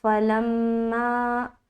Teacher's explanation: فلما، فا زبر فا، لام میم زبر لم، میم الف زبر ما۔ تو جب ہم لام کو ملائیں گے تو میم کے اوپر رکاوٹ کریں گے، کیونکہ یہاں پر ہم میم مشدد کا غنہ کرتے ہیں۔ دیکھیے دو حرف ایسے ہیں جس کے اوپر شد یعنی کہ تشدید آ جائے تو آپ کو غنہ کرنا ہے، اور غنہ کہتے ہیں ناک میں تھوڑی دیر آواز کا روکنا، یہ کہلاتی ہے غنہ کرنا۔